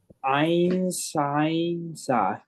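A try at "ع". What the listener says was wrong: Ain is the letter, but that's not how you make the sound.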